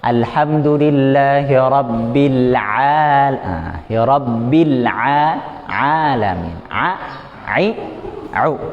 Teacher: Jadi ketika ain disebutkan, tenggorokan tengahnya dia menyempit, pas lepas baru keluar. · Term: huruf Ain